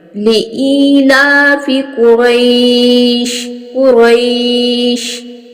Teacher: लिईलाफि, लाम के ऊपर खड़ा ज़बर है, इसको एक अलिफ की मिकदार के बराबर लंबा करके पढ़ेंगे। क़ाफ और वा, इसको हम मोटा और पुर करके पढ़ेंगे।